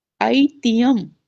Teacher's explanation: ये जो आधा ह है, आधा ह का उच्चारण उरस से होता है।